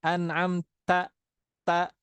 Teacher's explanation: dari ujung lidah nempel ke mana ke Pangkal gigi seri atas